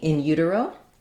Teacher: we have secondary stress on the word in · So it is just like the word in with our I vowel. The main stress in this phrase is on the U syllable.